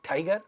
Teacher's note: In a word tiger, first syllable is stressed, tie. In a word tiger.